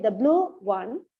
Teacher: the rising tone is not used here the blue is given only the falling tone